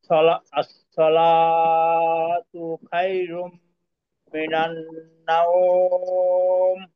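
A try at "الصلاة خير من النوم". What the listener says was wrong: আচ্ছা, এখানে খয়ের উচ্চারণ কি খ হবে না খা হবে? খয়ের উচ্চারণ খ, খ হবে তো, আপনার কিন্তু খা হয়ে গেছে, খয়রুম।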